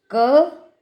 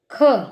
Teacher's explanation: कुछ ध्वनियों में अधिक श्वास वायु निकलती हैं और कुछ ध्वनियों में कम श्वास वायु निकलती हैं, है ना। जैसे आपने बोला क, तो आपने महसूस किया कि वायु कम निकली है, जबकि आप ख का उच्चारण कीजिए तो अधिक श्वास वायु का अनुभव होगा।